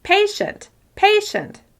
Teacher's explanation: Even though you can still hear all the sounds in the second syllable, the first syllable is the clearest and the easiest to understand.